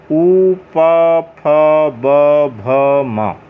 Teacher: ये प, फ, ब, भ और म, इन सब का उच्चारण स्थान क्या है? ओष्ठ।